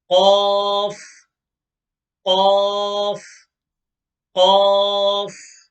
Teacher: It is pronounced the extremely back end of the tongue, the extremely back end of the tongue, where the tongue starts from back of the mouth, when it touches the top of the mouth, the palate. When the back end of the tongue touches the top of the mouth, which is called the palate, when these two touch, qaf is pronounced.